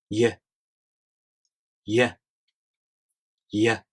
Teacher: For the [j] sound, you make the tongue position of the [i] vowel.